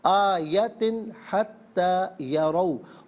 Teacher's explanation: ملا کر پڑھیں گے جاءتہم، جاءتہم کل آیت، کل آیت، حتی، ناظرین آیتن میں تا کے نیچے 2 زیر کی تنوین ہے، تنوین کے بعد یہاں پر ہا ہے تو حرف حلقی، تو یہاں آیتن میں غنہ یا اخفا نہیں کیا جائے گا۔